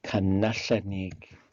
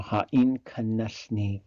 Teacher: the A gets kicked out of there by the na